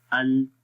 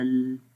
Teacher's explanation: زبان کے دونوں سائیڈ سے آواز جو ہے وہ پھر باہر کی طرف نکلتی ہے